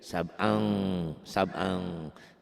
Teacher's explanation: ini ikhfa. Ada engnya bu ya.